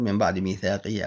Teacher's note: قلب النون الساكنة أو التنوين ميما مع الغنة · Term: الإقلاب